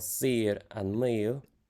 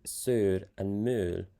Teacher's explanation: the AO combination, which is pronounced E or A, depending on the dialect in Irish, but U in Scotland